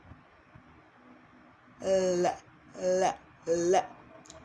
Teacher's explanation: To make the L sound, your tongue goes up, up, up, up, up. It goes all the way up. And the tip of your tongue touches the back of your upper teeth.